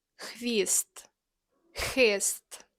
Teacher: Looks like an X, but it doesn't make a X sound. It's a scratchy sound from the back of your throat.